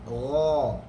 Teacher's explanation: Macam huruf ghain, gha, belakang lidah saja yang naik, tetapi depan masih ada udara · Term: infitah